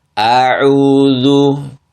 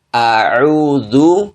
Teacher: Padahal hamzah di situ seharusnya dibaca satu harokat, tetapi kebanyakan itu dibaca, bukan kebanyakan, beberapa yang salah membaca itu adalah di situ adalah salah satunya adalah dengan memanjangkan huruf hamzah, ya. Huruf hamzah dibaca dengan panjang dua harokat atau tamtid, memanjang dia.